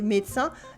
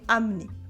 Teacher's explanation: French people cut letters to speak faster, especially the E sound, in small words such as je and le, or in longer words such as médecin, that we say médecin, and amener, that we say amener.